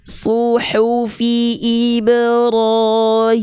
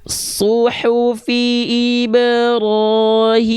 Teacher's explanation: ini semua kasroh angkat tengah lidahnya sambil direndahkan rahang bawah